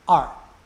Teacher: the fourth tone starts high goes low